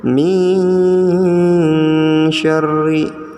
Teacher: jadi nunnya disamarkan dan dibaca mendengung dan ditekan ya. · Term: ikhfa